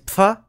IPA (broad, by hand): pf